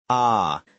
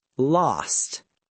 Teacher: In my British accent, I use a long a sound. >> Ah. So last becomes lost.